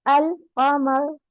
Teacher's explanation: तो हमजा लाम पर लाम साकिन पढ़ा जाता है और लाम की आवाज जाहिर होती है। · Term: इजहार कमरी